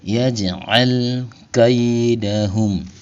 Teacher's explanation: Cirinya itu sukunnya sukun asli berada di tengah-tengah bacaan. Maka cara bacanya jim sukunnya dipantulkan dengan pantulan kecil. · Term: qalqalah segra, qalqalah